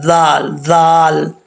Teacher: زبان کی نوک اوپر والے دانتوں کے جو کنارہ ہے، نیچے والا کنارہ ہے، اس کے اندرونی حصے سے لگے گی